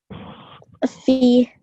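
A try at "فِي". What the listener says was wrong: So a bit longer. Fi. How many seconds? And the same rule applies here as did apply here. And what's that? It's a ya madda. So you have a ya sakin and before it you have a kasra and that just stretches that ya for 2 seconds. Fi.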